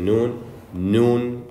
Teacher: if you were to hold your nose and try to say one of these two letters it wouldn't come out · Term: nasalization